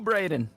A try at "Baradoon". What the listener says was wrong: No. The U is in the spot. It's supposed to be pronounced Baradoon. Baradoon.